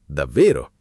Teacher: Con il tono che sale forte è sorpresa incredula.